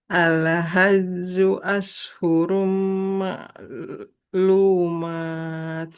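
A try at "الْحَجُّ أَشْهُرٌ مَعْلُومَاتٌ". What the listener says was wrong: Nah, betul.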